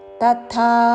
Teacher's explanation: అల్పప్రాణము తా ముందు తర్వాత మహాప్రాణాక్షరము థా